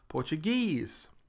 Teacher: with the stress on the last syllable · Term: syllable stress